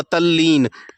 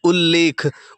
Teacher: ता के बाद अगर कहीं पर ला दिखाई दे जाए, ठीक है, तो जो आगे वाला जो ला है उसके अनुसार क्या हो जाएगा? आधा ला हो जाएगा।